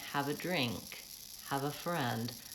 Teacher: hava is fast and friend and drink the noun at the end of the phrase is stretched it has the stress